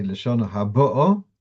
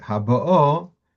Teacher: the first time he would say Lashona Habo, Mil-El, on the second last syllable, and in the second one, he would say Haba'o, the stress on the last syllable